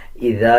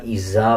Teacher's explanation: زا نہیں بلکہ ذال پڑھا جائے گا اور جب ذال کو ادا کیا جاتا ہے تو زبان کی نوک دونوں دانتوں کے درمیان لے کے آئیں گے تب ذال صحیح ادا کیا جاتا ہے